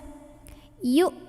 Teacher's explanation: Jadi bukan dipanjangin yu, ini bukan pemanjang, bukan wawu ya, hamzah. Yu, suara hamzah itu tertahan ya, punya sifat namanya syiddah, jadi tertahan suaranya. Yu, udah nggak ada bunyi lainnya.